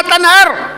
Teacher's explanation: ایک ہا ہے جو حلق کے آخری حصے سے نکلتی ہے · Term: گول ہا